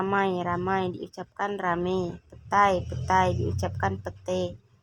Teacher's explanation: Perubahan ini terjadi pada bunyi vokal rangkap ai ke vokal tunggal e. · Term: Monoftongisasi